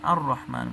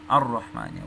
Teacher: تاسو ګورئ دوستانو را د ابغي، حجک و خف عقیمه په مجموعه کې نسته، نو چې نسته را د حروف شمسیو څخه ده، تر الف لام وروسته راغلی ده، نو دغه الف لام په را کې مدغمیږي، الرحمن ویل کېږي. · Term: ادغام شمسي